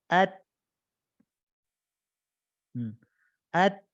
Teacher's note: Nah, sebelum udara itu mengalir, itu ada proses di mana suaranya tertahan. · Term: huruf ta